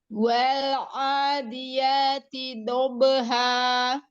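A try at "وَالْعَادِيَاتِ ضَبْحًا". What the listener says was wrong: A-nya sempurnakan dulu, madhobi'inya. Bo, angkat lagi pangkal lidahnya ya, lalu itbak. Jadi itbak itu suaranya terkepung. Kalau diibaratkan dengan tanda panah, itu suaranya naik lurus ke langit-langit atas. Jadi dia suaranya lebih gendut ya. Bod juga punya sifat isti'la, ya, punya sifat isti'la.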